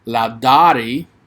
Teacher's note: if i would emphasize that r sound but it's kind of roll that r a little bit